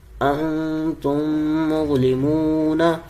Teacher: میں نے نون کے اوپر بھی گنہ کیا، میم کے اوپر بھی گنہ کیا